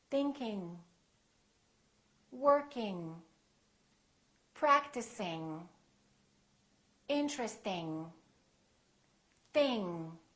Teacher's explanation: If you release it, you can just release it a tiny little bit, going, going, tiny bit, soft release or no release at all. It's kind of a nasal sound.